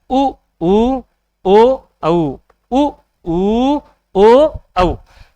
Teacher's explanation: तो इनमें होठ हमारे क्या बन रहे हैं, गोल बन रहे हैं। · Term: वृत्ताकार